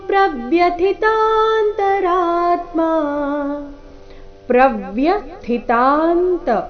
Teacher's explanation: ಥಿ ಮಹಾಪ್ರಾಣ ರಸ್ವ ಮುಂದೆ ಅಲ್ಪ ಪ್ರಾಣ ಇದೆ